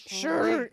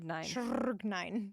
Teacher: He like rolls the R every time.